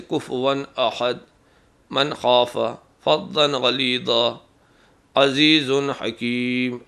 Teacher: اگر تنوین یا نون ساکن کے بعد حروف علقی آ جائیں تو وہاں تنوین اور نون کی آواز اصلی اور صاف رہے گی، غنہ نہیں کریں گے